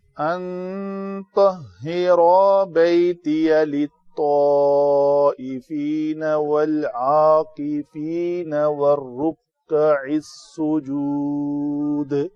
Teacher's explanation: دال کے اوپر قلقلہ کریں گے · تو کو پر پڑھیں گے تاکہ تا نہ بنے